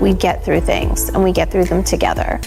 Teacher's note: vocal fry means a low, creaky kind of voice which is used at the end of sentences by young American females of a certain type and which is widely considered irritating and even dangerous.